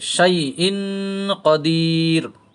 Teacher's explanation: জিহ্বার মধ্যভাগ, ওপরের দাঁতের ওপরের তালু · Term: শিনের মাখরাজ